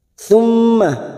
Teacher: mim yang bertasdid gunnah musaddadah kita tekan selama 3 harokat